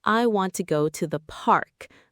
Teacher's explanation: in the sentence, I want to go to the park, the word park gets the most stress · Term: sentence stress